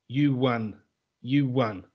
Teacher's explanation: between the vowel sound of oo, you, and a for and, we add a sound, we add a w